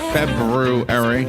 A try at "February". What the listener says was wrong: The R, you can't forget the R.